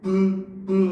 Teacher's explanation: 입술 소리 양수 음입니다 그렇죠 그래서 비 보면 브 브 해서 입술 두 개가 붙었다 떨어지면서 나는 거죠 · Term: 두입술 소리